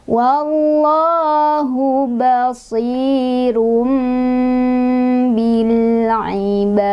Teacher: Mim di sini menandakan iklab, jadi kita tidak baca lagi run, melainkan ke mim, rum gitu ya, sambil didengungkan